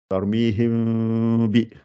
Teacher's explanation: on prépare les lèvres et on fait le son qui sort par le nez.